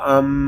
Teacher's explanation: میم شدد ہے، اس کو ہم غنے کے ساتھ پڑھیں گے کیونکہ میم شدد میں ہمیشہ غنہ ہوتا ہے۔